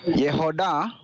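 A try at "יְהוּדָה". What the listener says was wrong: It's a shuruk.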